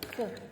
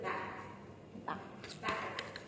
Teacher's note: made by raising the back of the tongue towards the soft palate called the velum